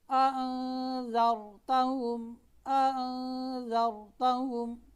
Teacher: را سے پہلے زبر ہے، را موٹی پڑی جا رہی ہے